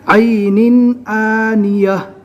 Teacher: عین کو حلق سے اچھی طرح نکالنا ہے